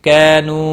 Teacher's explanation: علیم بما ما الف مدہ ہے، ایک الف کے برابر کھینچ کر پڑھیں گے۔ کانو واو مدہ ہے اور الف مدہ ہے، دونوں کو ایک ایک الف کے برابر کھینچ کر پڑھنا ہے۔